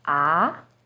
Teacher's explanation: Second tone, 二 声, starts with a little lower pitch and goes up.